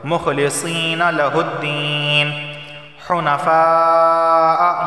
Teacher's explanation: مخلصین لہ الدین حنفاء، یہاں بھی مد متصل ہے، ایک لفظ کے اندر الف مدہ اور حمزہ دونوں جمع ہو گئے، لازمی 4 الف کے برابر اسے کھینچ کر پڑھنا ہے